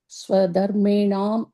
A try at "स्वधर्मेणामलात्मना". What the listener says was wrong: You cannot break that like that. Swadharmenamalatmana. Swadharmena amala atmana. Moon word, but you can just say it together. You don't have to break it that way.